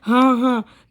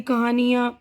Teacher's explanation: तो हल्की सी नाक से आवाज़ आ रही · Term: नून गुन्ना